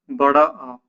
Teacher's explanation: आप बड़े आ को बोल के देखिए एक बार, मुख पूरा खुलेगा बड़े आ को बोलेंगे तो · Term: विब्रत स्वर